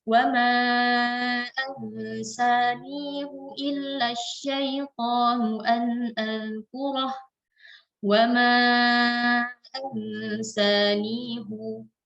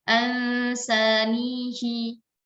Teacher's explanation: Tapi khusus pada ayat ini, Al-Kahfi ayat 63, hal dhamirnya itu tidak dibaca dengan kasrah, akan tetapi dia dibaca dengan dhammah.